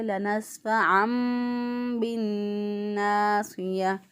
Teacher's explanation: لنسفعن کے اینڈ پہ جو نون ہے اس کی آواز پھر نہیں آئے گی، اس کو میم بنا کر پڑھیں گے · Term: اقلاب